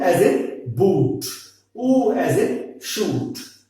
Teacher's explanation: back, rounded, close vowel